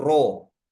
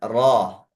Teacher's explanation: kalau pakai O itu mimik mimik bibirnya akan membulat karena O itu bulat sedangkan fathah tidak bulat